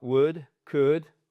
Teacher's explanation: on prononce jamais le L dans would dans would could OK et à chaque fois c'est un ou court.